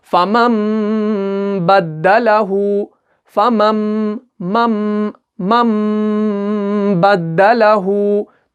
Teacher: नून साकिन और तनवीन के बदले में हमें मीम को पढ़ना है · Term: इक़लाब